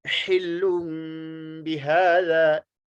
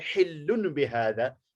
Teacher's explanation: लेकिन ये तनवीन को मीम के साथ बदलना है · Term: इक़लाब